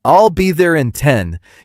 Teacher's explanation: in I'll be there in 10, you might stress 10 slightly while keeping the rest relaxed.